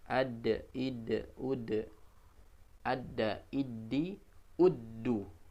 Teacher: huruf dal ketika sukun dipantulkan, ya, qalqalah